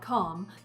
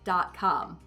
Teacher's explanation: Most of my vowels would remain American, but some of the vowels that we would say ah will have a bit more lip rounding on them. So earlier when I mentioned my website and I said .com, there's a bit more lip rounding than in my native accent, .com.